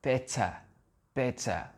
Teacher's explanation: Ça va être, les Anglais, ce sera better, better. C'est un sort de E, où le R, on ne l'entend pas.